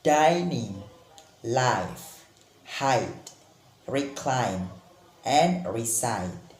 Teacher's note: this diphthong is produced by combining sound a and i